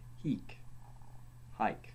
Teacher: H was a breathing sound, an aspirate, as in English, only less harshly pronounced